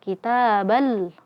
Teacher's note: Inna kita huruf ta fathah setelahnya alif, maka di sini mad tabi'i dibaca 2 harokat.